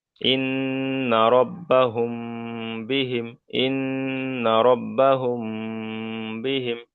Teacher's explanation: মিম সাকিনের পরে বা এসছে, তাই এই মিমটাকে একালিপ পরিমাণ গুণনা সহ পড়তে হবে। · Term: ইখফায়ে শাফাবি